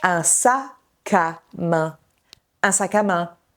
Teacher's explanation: la consonne de fin migre vers voyelle initiale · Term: l'enchaînement consonantique